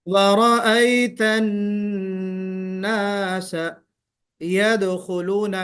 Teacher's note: وَرَأَيْتَ النَّاسَ يَدْخُلُونَ میں دال پر قلقلہ ہوگا. يَدْخُلُونَ، خا تھوڑا آپ کو موٹا کر کے ادا کرنا ہے.